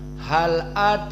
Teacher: makna taklil condong sedikit kepada kasrah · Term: at-taqlil